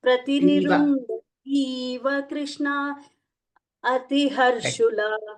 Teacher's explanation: Dha is Mahaprana, Ti is not Mahaprana.